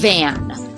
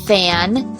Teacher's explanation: Same sound, the only difference is voiced and voiceless.